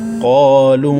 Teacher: قاف کے بعد الف مدہ ہے، لام کے بعد چھوٹی مد ہے، تو اس کو 3 الف تک کھینچیں گے